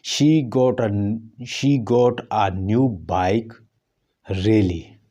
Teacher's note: पहले फॉल, उसके बाद हमने जोर दिया रियली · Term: फॉल राइज